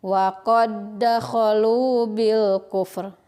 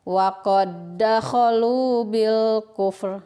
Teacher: dalil yang lainnya berharkat maka disini berlaku hukum idgham mutamatsilain jadi cara membacanya langsung saja dimasukkan ke huruf yang kedua dan ditekan